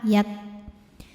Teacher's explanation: huruf kaf dari segi suara sifatnya itu syiddah, kuat, tertahan, semakin ditekan semakin tertahan, yak. Nah, dari segi keluar tidaknya angin sifatnya hams.